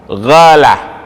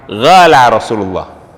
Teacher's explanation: orang Yaman itu huruf qaf, qala itu tidak bisa disebut, mereka menyebutnya menjadi huruf gha, ghala, ya, itu orang Yaman. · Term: dialek